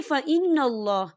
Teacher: یہاں نون مشدد ہے تو یہاں پر غنہ ہوگا اور اللہ کا نام پر پڑا جائے گا، کیونکہ اللہ کے نام سے پہلے زبر ہے۔